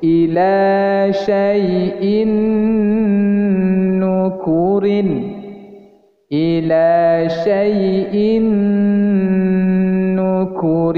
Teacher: Nuh urine ini NU Inu ini disebut hukum bacaannya Idgham Bighunnah memasukkan menahan dan mendengungkan Nun